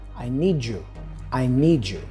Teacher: D for need and Y for you. This combination, D plus Y, usually sounds like Jew. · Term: connected speech